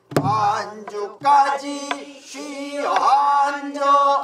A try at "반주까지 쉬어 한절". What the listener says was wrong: 쉬어 아니야. 쉬어 한절해야지. 쉬어 한절. 너무 떨어진다니까. 쉬어 한절하니까. 반주까지 쉬어 한절.